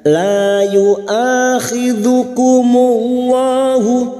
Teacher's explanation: lam jalalah yang didahului dhammah kita baca tafkim